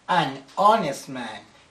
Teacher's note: the word honest you don't pronounce the letter H so the first sound of the word is a vowel so in this case we say an honest man because the